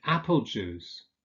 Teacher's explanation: apple juice where the first syllable is stressed or rather the first word